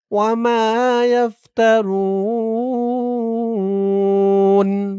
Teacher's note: এখানে অক্ফা করার কারণে পেশের পরে ওয়াও সাকিন এক আলিফ টান ৩ আলিফ হয়ে গেছে